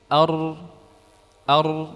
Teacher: Maka yang benar takrirnya adalah sedikit.